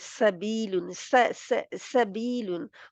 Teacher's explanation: सीन की आवाज बारीक और विसलिंग है